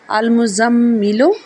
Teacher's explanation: حمزہ زبر لام ال، میم پیش زا مز، زا زبر میم زم، میم زیر می، لام پیش لو، المزملو، مزملو میں زا کی آواز ادا ہوگی، سٹی کی آواز آئے گی زا میں